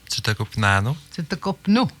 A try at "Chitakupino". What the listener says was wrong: Non, il n'y a pas de nano là, dans ce sens-là.